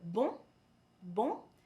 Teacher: the word bon, bon, is pronounced as bon with a very nasal tone